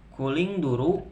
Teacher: ada nun sukun bertemu dengan salah satu huruf ikhfa hakiki yaitu zo. Cara membacanya samar-samar. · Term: ifa hakiki